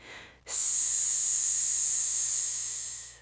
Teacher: Your throat's completely still. The sounds being made entirely by the air pushing past your teeth. That means S is an unvoiced consonant.